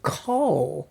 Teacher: And I just wanted to emphasize that we say here generally kol, and that's using the kamatz rule that says that the kamatz becomes a short O sound in a closed syllable, meaning there's no vowel after the next letter